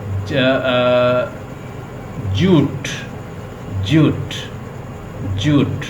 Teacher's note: ये भी वाइब्रेट करता है, तो हम इसको कहेंगे कि ये वॉइस्ड है और पैलेटल साउंड है